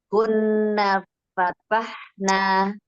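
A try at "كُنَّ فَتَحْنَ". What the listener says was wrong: Nah, Masya Allah. Lancar sudah ya, Umi?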